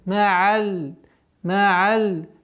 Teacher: Такой скользящий, непринужденный уход, полноценное произношение звука айн. Гортанный.